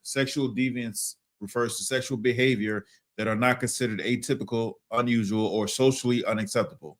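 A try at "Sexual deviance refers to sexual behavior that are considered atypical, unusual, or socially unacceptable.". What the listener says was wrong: That are considered atypical. You said are not. Slow it down, man. Read it again.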